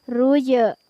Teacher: ada huruf jim yang bersukun di tengah ayat, maka dibaca memantul huruf jimnya